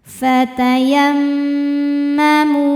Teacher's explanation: Mimnya dihukumi dengan gunnah musyaddadah karena mim bertasydid. Cara bacanya dengung. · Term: ghunnah musyaddadah